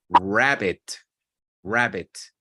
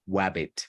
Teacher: Sometimes the babies confuse the R with a W, but it's because the R at the beginning of words begins with rounded lips normally.